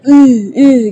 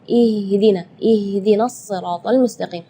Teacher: makhraj huruf ha itu adalah dari tenggorokan jadi Keluarnya tipis karena ha itu eh termasuk huruf di antara 28 huruf hijaiah